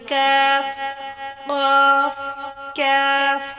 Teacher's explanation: جب زبان کا پچھلا حصہ اٹھ کر نرم تالو کو چھوتا ہے تو یہ حروف ادا ہوتے ہیں